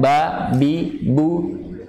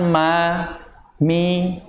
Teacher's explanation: Lebih kuat mana? Lebih kuat ba, karena memang ba mempunyai sifat syiddah. Sedangkan huruf mim mempunyai bainiyah, dia tengah-tengah antara syiddah dan rokhawah.